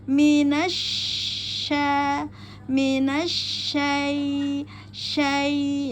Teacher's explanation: pada syin bertasdid alif lam syamsiah maka dikeluarkan hak mustahak pada SY bertafasyi sifatnya mengeluarkan udara pada rongga mulut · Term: shin bertafashi